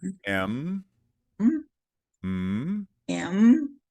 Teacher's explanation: Now we're going to do nasal sounds. We're going to do M, which is with the lips, sealed.